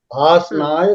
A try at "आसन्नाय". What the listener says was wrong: आसन्नाय double नकार अस्ति. अत्र उच्चारणं सम्यक् रीत्या करणीयमेव. अन्यथा छन्दोभङ्गः भवति.